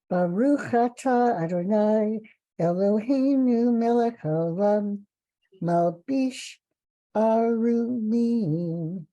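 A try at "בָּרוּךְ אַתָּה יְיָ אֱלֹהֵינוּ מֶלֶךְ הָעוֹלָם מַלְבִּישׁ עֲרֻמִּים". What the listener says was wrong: Beautiful. You have such a lovely voice.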